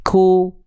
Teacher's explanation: Kalau huruf kof nggak boleh ku, tapi u. Kalau kaf ku, ada percikan nafasnya.